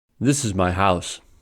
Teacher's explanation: the sentence has one stressed syllable house so the pitch Rises to level three and then falls down to level one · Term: pitch level three, high pitch